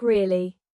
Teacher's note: For example, when you ask a question like "Really?" your voice goes up slightly at the end